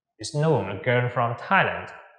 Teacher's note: Chúng ta lên giọng ở cái từ land.